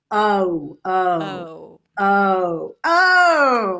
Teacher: we have 'ow', which is the diphthong of 'uh'-'cup' into 'uw'